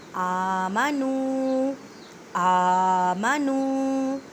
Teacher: آ حمزہ کو ایک الف کی مقدار میں کھینچ کر پڑھیں۔ ایک الف کا اندازہ اس طرح لگائیں کہ آپ ایک انگلی کو کھولنے یا بند کرنے میں جتنا ٹائم لگتا ہے۔